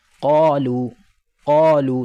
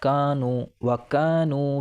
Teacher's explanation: काफ तो पुर है और हलक से निकलेगा और काफ बारीक है। · قاف تو پر ہے اور حلق سے نکلے گا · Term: बड़ा काफ, بڑا قاف